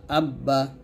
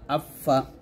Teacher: এখানে চারটে হরফ আসছে, চারটে আমরা দুই ঠোঁট থেকে উচ্চারণ করব।